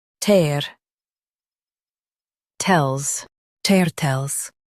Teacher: Stress tur and keep tles light and quick.